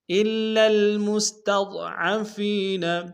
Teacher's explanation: تا کو ضاد کے سامنے آئیں گے، ضاد کو موٹا ادا کریں گے، فا کو یا کے سامنے آئیں گے، یا مد کے درمیان کھینچیں گے۔